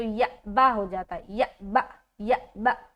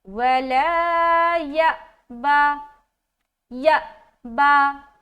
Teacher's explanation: با میں جھٹکا نہیں ہونا چاہیے اور لمبا بھی نہیں ہونا چاہیے